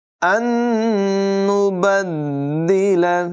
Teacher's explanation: ان نبدل، یہاں پر نون ساکن کے بعد ایک اور نون ہے حروف جر معلول میں سے، ادغام ہوگا یعنی غنہ کر کے ملا کر پڑھیں گے. دال میں ذرا رک کر جماؤں کے ساتھ ادائیگی کریں گے.